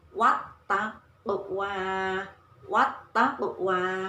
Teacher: Alif lam bersambung dengan huruf ta. Alif lamnya tidak dibaca. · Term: alif lam syamsiyah